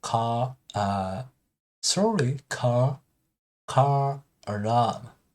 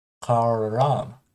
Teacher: add R in between vowel, like car alarm, not car car alarm, but linking sound, car alarm, like that.